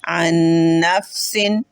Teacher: नून साकिन का असर बाकी ही नहीं रहा, नून साकिन ख़त्म हो गया और बस एक नून ही बोला जा रहा है। अन-नफ्सिन, इसको कहेंगे मुकम्मल इदगाम।